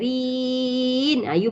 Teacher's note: untuk jadi mad arid sukun, kita hanya panjangkan pada mad asli saja, agak-agak cukup panjang baru masukkan huruf nun tu